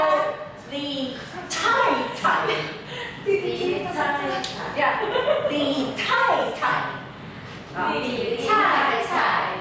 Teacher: The puff of air has to come through. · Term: Aspirated